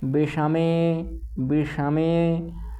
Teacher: विषमे में भी मूर्धन्य षकार है